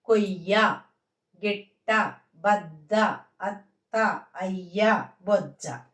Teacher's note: య య అన్నప్పుడు ఆఫ్ పలుకుతుంది ట అన్నప్పుడు ట చూడండి హాఫ్ పలుకుద్ది అంటే మొదటి అక్షరం హాఫ్ రెండో అక్షరం ఫుల్ గాను ఉంటది అన్నమాట ఆ అది అప్పుడు మొదటి అక్షరం యొక్క ఆకారం దీనికి వచ్చి ఇది ఒత్తుగా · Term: ద్విత్వాక్షర పదాలు